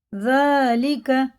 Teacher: ذال کو باریک پڑھیں گے، ذالکہ جالیکہ نہیں پڑھیں گے